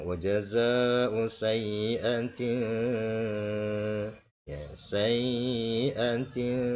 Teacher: Sayyi'atin, perhatikan tak marbutah ini yang ditanwin, ya, menghadapi huruf sin, ya, menghadapi huruf sin. Maka ini hukum bacaannya adalah ikhfa, ya, dibaca dengung